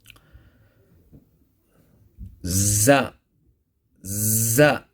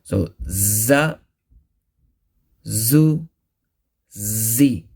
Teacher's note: With the tip of the tongue touching the edges of thanaya sufla and a little of thanaya ulya, thus giving the sound of Z.